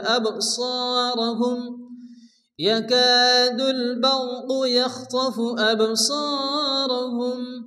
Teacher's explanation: বা সাকিন কলকল হালকা ধাক্কা দিয়ে পড়তে হবে